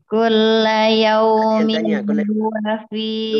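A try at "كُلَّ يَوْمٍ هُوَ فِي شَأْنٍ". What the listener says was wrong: Tapi kayak masih kurang tawassut nun, kayak masih kurang sedikit aja. Kullu yawmin huwa fi sya'n.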